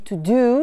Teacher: Il y en a un qui se dit to do, c'est un ou long